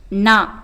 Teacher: நாவின் நுனி மேல்வாய் பல்லின் அடிப்பகுதியை தொடுவதால் நா என்னும் எழுத்து பிறக்கிறது